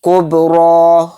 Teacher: طامۃ کاف با پیش کب، را کھڑا زبر را، کب را، را کو موٹا یعنی پر کر کے پڑھیں گے کیونکہ را کے اوپر کھڑا زبر ہے